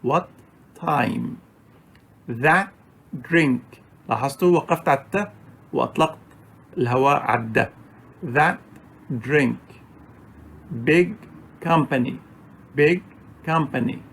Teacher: there's a short stoppage and we do not release the air from our mouth until we start pronouncing or producing the second consonant